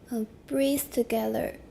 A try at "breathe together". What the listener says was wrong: That's a good one. Except remember to make it longer.